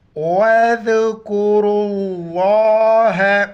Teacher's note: لفظ اللہ سے پہلے را پر پیش ہیں تو لفظ اللہ کو موٹا پڑھیں گے اور ذال کے وقت زبان باہر نکالیں گے. واو الف اور لام کو بیچ میں نہیں پڑھیں گے. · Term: لفظ اللہ موٹا